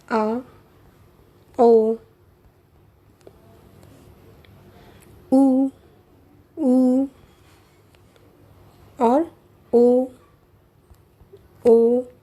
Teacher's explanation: इन सभी के उच्चारण के समय हमारी जिह्वा का पश्च भाग सक्रिय रहता है, इसीलिए इन्हें पश्च स्वर कहा गया है।